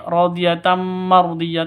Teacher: Tanwin bertemu dengan mim. Cara bacanya masuk ke mim disertai dengung 2 ketukan. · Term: idgham bi gunnah